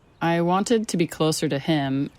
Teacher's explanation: Então esse to virando ra ou ru é muito comum.